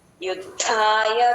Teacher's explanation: యుద్ధాయ ద కింద ద వత్తు మహాప్రాణం ఉంది గమనించండి